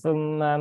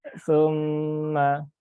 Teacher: Kemudian summa ada mim bertasydid ya, mim bertasydid ditahan 3 harokat ya. Ditahan 3 harokat, jangan tergesa-gesa.